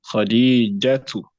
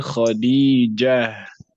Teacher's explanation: So in pronunciation, this round ta will be converted into a ha in addition to ending upon sukun.